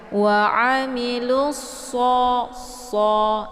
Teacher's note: Jadi cara baca lusso ini ditebalkan huruf shadnya ya, karena posisi shad itu yaitu ujung lidah dengan sejajar dengan gigi seri bagian atas ya. Jadi posisi lidah dengan gigi yaitu agak sedikit renggang ya.